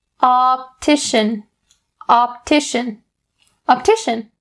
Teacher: all those ah sounds are very clear and round